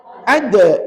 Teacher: huruf dal ni hujung lidah kita tekan kat belakang gigi kacip atas, belakang. Maknanya hujung lidah tuan-tuan tak payah keluar.